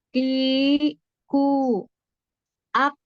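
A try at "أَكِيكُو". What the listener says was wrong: Terlalu ini malah K-nya nanti terlalu ke belakang lagi ya di. K gitu. Kakiku.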